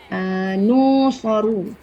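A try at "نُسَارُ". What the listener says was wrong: Sa, bukan so.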